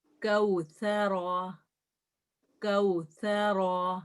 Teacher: سا میں جو ہے نا ہمس بھی ہوتا ہے، تھوڑی سی آواز جاری رہتی ہے، کنٹینیو رہتا ہے، ایک دم اس رکتا نہیں ہے.